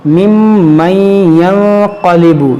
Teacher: یہاں پر نون ساکن کے بعد قاف ہے، یہاں پر اخفا ہوگا